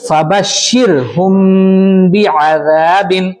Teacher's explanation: یہاں پر شر نہیں بولنا، فبشر را باریک